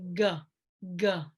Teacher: open up that space and then you can say go go so the back of the tongue goes up and down